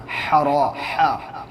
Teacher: اور ہا جو ہے نا حلق سے نکالیے گا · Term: بڑا ہا